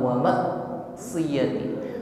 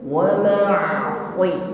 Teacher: Bil ismi wal udwani wa ma'siyati rasuli wa bil birri wat taqwa wa huruf ain sukun sifatnya tawassut, ya, jarayanul juz'i wal shawt, alirkan sebagian suara dari huruf ain ketika sukun. Masih ada efek suara dari huruf ain yang masih mengalir, bukan tertutup atau putus, bukan wa ma'siyati.